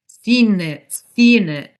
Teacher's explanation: So it sounds as if the consonant of the last word is the first sound of the next word. So instead of seen it, it sounds like seen it. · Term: consonant to vowel linking